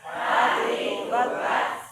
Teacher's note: huruf ta tempat makhrajnya dia dikeluarkan mesti dari ujung lidah, tidak boleh berubah dari tempatnya